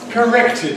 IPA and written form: kəˈrektɪd (corrected)